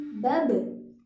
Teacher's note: ba ketika sukun, cara membacanya memantul